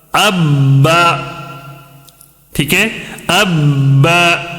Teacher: با کے اوپر تشدید ہونے کی وجہ سے یہ با کو 2 مرتبہ پڑھنا ہے